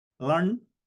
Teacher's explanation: Now this Lan, La has nasalized.